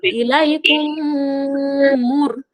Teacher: মিম সাকিনের পরে মিম এসেছে, তাই মিমকে মিমের সঙ্গে মিলিয়ে একালি পরিমাণ গুণা করে পড়তে হবে। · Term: ঈদগামে সাফাবি